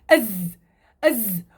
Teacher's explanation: الحرف رخو، رخو، ما في داعي يشد عليه